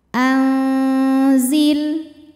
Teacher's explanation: dengung ausat ikhfa ausat sebab nun sukun menghadapi huruf Zain maka nun sukun dibunyikan samar-samar siap-siap ke Zai disertai bunyi dengung samar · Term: ikhfa Hakiki, ikhfa hakiki